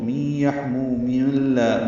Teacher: پچھلی آیت کے ساتھ ملانا ہو تو می یحمو من اللہ، میم کو لام سے ملانا ہوگا، من لا ہو جائے گا، ادغام کامل ہے یہ